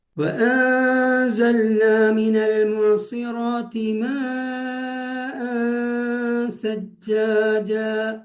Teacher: സാക്കിനായ നൂനിന്റെയും തൻവീനിന്റെയും ശരിയായ ഉച്ചാരണം ഹൈഡ് ചെയ്തുകൊണ്ട്, അത് മറച്ചു വെച്ചുകൊണ്ട് ഒരു 2 ഹർക്കത്ത് മണിക്കുക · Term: ഇഖ്ഫ